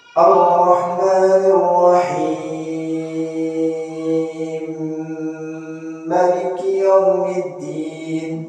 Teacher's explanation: Sebab lafaz Ar-Rahimnya disukunkan, mim lafaz Ar-Rahim disukunkan, lalu dimasukkan mimnya ke mim Maliki, sambil dimasukkan lafaz Maliki pun dikosarkan seperti mana riwayat Qalun. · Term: idgham mutajanisin